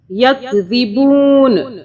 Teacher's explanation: نا نہیں پڑھیں گے، ن پڑھیں گے، چھپی آواز کے ساتھ نون کو پڑھیں گے